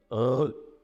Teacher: on peut faire vibrer la luette contre le dos de la langue